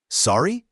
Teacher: You say it with a rising intonation to show you didn't hear or understand.